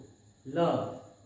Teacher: ल जो है इसको पार्श्विक व्यंजन बोलते हैं। ल का जो उच्चारण होता है वो ल जीभ के पिछले हिस्से से होता है